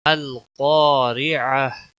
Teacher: میم لام زبر مل، قاف الف زبر قا، ملقا، را زر، ملقارع، عین زبر ع، ملقارع، تا پیشتو، ملقارعۃ، وقف کی صورت میں القارعہ، گول تا ہا میں بدل جائے گی، ملقارعہ، گول تا ہا میں بدل جاتی ہے